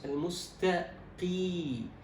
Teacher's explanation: إذا هي مكسورة إذن درجة التفخيم تكون أدنى الدرجات